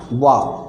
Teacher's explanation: वा का जब उच्चारण करेंगे आप तो दांत और ओठ दोनों से करेंगे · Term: दंतोष्ठ